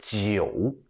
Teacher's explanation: You go down and then you go up. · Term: the third one